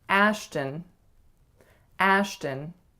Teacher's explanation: make sure your first vowel is really a tense a sound, and the second vowel is a schwa.